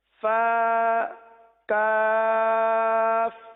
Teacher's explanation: فا کو جو ہے وہ ایک الف تک کھینچ کے پڑھیں گے. فا کی مقدار ایک الف ہے، جیسے با تا سا، اسی طرح فا اس کو ایک الف تک کھینچ کے پڑھتے ہیں، اسی لیے اس کو ایک الف تک اور کاف کو 3 الف تک.